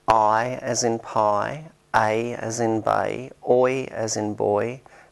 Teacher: we finish saying the vowel than when we started saying it this kind of vowel which changes its position while it is being pronounced is called a dipthong